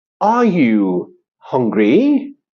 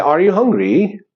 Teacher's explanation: when you are asking a question, yes, no question, the intonation pattern is rising, like, are you hungry?